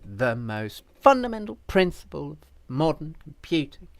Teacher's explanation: every other and of is not stressed these are weak words